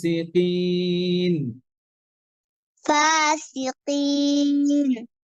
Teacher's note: আর কফ কে আরেকটু পাতলা করবেন এখানে কফে কাসরা আছে